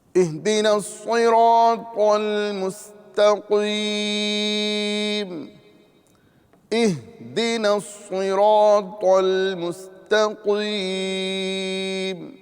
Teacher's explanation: یہاں آپ دیکھیں گے کہ حمزہ اور ہا یہ دونوں کا مخرج ایک ہے. حمزہ اور ہا حلق کے نیچے والے حصے سے، یعنی ابتدائی حلق سے ہا اور حمزہ ادا ہوتے ہیں، لہذا دونوں کی ادائیگی میں ہم خاص خیال رکھیں گے.